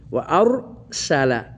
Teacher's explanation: ওয়া আর সালা, ওয়া আর সালা, মুখ মোটা হবে, রর জায়গায় পুর হবে, কিন্তু সিন পুর হবে না, সিন পুর হবে না। সিনটাকে তখন ঠান্ডা করে নরম করে পাতলা করে পড়ে নিতে হবে